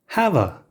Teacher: difference is have a when said quickly it turns into hava the natural pause between the two words disappears · The natural pause between the two words disappears, and the stress in the phrase changes from the a in I have a sister to the a in have.